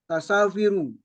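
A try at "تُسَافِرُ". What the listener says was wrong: Kalau pertama kali dibaca u, walaupun domirnya berganti, tetap aja bacaannya u. Ya, huruf pertama tetap bacaannya u. Ingat Pak, kalau awalnya bunyinya U, yang lain juga akan bunyi U awalnya, walaupun sudah berganti domir, walaupun berganti huruf.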